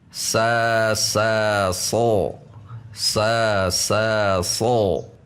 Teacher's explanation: Yang berubah hanya pangkal lidah saja, tidak membulat.